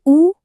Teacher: महसूस किया कि जीभ का पिछला हिस्सा कैसे ऊपर उठ रहा है? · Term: पश्च स्वर